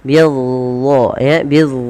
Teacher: Padahal dia bukan makhrajnya bukan biz tapi dia ujung lidah harus menempel dengan gigi sari atas bid ya bid dan pangkal lidah kita angkat